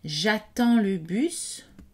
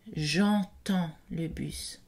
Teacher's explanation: une distinction entre j'attends le bus, pas nasal, et j'entends le bus.